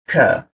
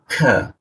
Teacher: Nah, kita baca ini wa huruf K posisinya di tengah lidah ya ee di siku lidah dia ka kita turunkan ada hembusan udaranya